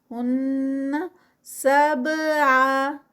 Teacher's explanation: سب پہ قلقلہ، با کتب جد کے لیٹرز میں سے اور سٹاپ پہ ہے